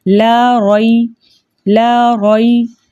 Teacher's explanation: ساتھ یہاں پر یائی لین آ رہی ہے، یائی ساکن سے پہلے زبر ہو کسی بھی حرف کے اوپر تو ایسی یائی لین کہلاتی ہے، اور یائی لین کو 1.5 حرکت کی دیر لگا کر نرمی اور سہولت سے پڑھتے ہیں · لام جو ہے الف مدہ کے ساتھ آ رہا ہے، اس لیے ہم اس کو 2 حرکت کی مقدار کھینچ کر پڑھیں گے۔ را کے اوپر زبر ہے، اس لیے اس را کو موٹا پڑھیں گے۔